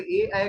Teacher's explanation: ए ऐ का उच्चारण स्थान कंठ तालव्य है